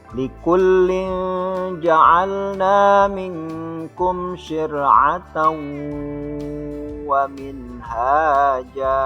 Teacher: Idgham yang menggunakan gunnah. Nah, ketika cara membacanya itu ditahan sesuai dengan hukum gunnah, keluarnya pada lubang khisum atau lubang hidung. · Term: idgham bi gunnah